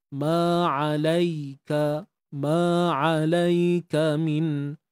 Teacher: Ya mati sebelumnya baris atas, bacaan lin kat sini. Ada sifat lin eh, lunak, lembut je.